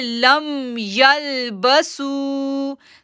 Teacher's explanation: اب دیکھیں لم، یہاں پر ہم نے میم ساکن کے بعد یا آ رہا ہے، ہم نے میم کو ظاہر کرنا ہے · سو کو کھینچیں گے کیونکہ واو ساکن سے پہلے پیش ہے، مد اصلی ہے، سو کو 2 سیکنڈ کے لیے کھینچیں گے